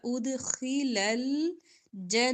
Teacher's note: خا موٹا دال پر کلکلا